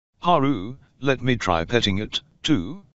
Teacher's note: Rising intonation on the last word.